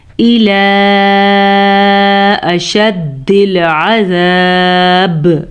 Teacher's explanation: دال پہ شد کو ادا کریں گے اور عین کے مخرج کو واضح کر کے پڑھیں گے